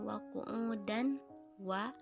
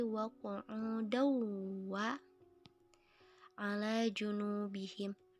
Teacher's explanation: harokat tanwin dileburkan dan dibaca secara mendengung. Jadi bukan wa qu'udan wa, tapi wa qu'udaw wa ala junubihim. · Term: idgham bi gunnah